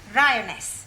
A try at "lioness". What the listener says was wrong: No, l. You're not saying it right. Try saying lioness. Well, in future, every time you see an L, pretend it's an R, right?